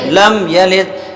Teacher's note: یلد میں یا بھی نہیں کھینچیں گے، لام بھی نہیں کھینچیں گے، دال میں قلقلہ ہوگا